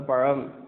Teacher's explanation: இது வேற எந்த மொழியிலயும் இல்லை ழ அந்த பழம் அப்படி சொல்லும்போது அந்த ழகரம் வந்துட்டு உள்நோக்கி வருடும் தொட்டு தடவி வருடி வரும்